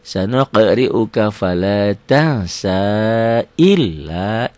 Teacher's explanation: biasa aja, L-nya double aja tanpa ditahan, tanpa dengung